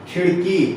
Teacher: खिड़की में की पे ज्यादा जोर पड़ रहा है, तो यहाँ इसी को हम बलाघात कहेंगे।